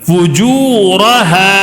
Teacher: الف مدہ ہے. ایک الف کھینچ کر پڑھنا ہے.